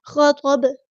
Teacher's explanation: ہم ساکن کر دیں گے وقف کرتے ہوئے، تو یہاں پہ با پر کلکلا ہوگا، آواز پلٹتی ہوئی محسوس ہوگی